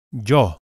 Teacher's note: the Y is pronounced similarly to English but with just a hint of J